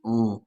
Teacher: نون ساکن کے بعد فا ہے اور فا حروف اخفا ہے تو ان نہیں اون